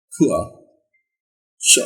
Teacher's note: this sound starts with oo and glides to schwa sound. Same. As we glide, the loudness decreases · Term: oo sound